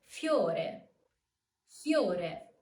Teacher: you can pronounce the diphthong with a single emission of voice.